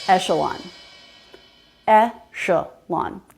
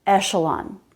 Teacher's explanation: In this case, it's the sh sound, not the k sound. But there would be no way to know that just by looking at the word.